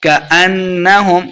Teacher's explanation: اس کاف کو موٹا نہیں پڑھنا. جو 2 نقطوں والا کاف ہوتا ہے اس کو موٹا پڑھنا ہوتا ہے، تو اس کاف کو ہم موٹا نہیں کریں گے.